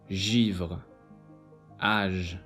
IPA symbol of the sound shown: ʒ